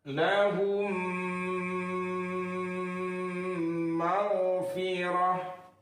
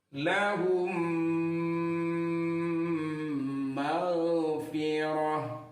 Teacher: Mim mati bertemu dengan mim, itu dibaca dengung. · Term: idgham mimi